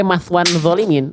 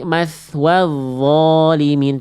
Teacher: nggak pakai bunyi nun, nggak pakai bunyi n, nggak ada huruf nun bunda di sini. Ini huruf vo, bukan maswan, nggak ada bunyi n.